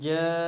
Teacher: الف مدہ کے بعد لفظ نون آیا ہوا ہے، لہٰذا ہم نے الف مدہ کو زیادہ کھینچنا ہے